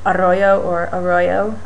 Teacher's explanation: The same with arroyo or arroyo, depending on whether you speak any Spanish, you might trill that R or just use the English sounding R's